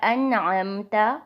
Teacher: یہاں نون کے اوپر جزم ہے اور اس کے بعد عین جو ہے وہ حروف حلقی میں سے ایک حرف ہے، تو یہاں پر غنہ نہیں کریں گے، نہ ہی حرف کو لمبا کر کے پڑھا جائے گا، بلکہ نون کی آواز واضح نکلے گی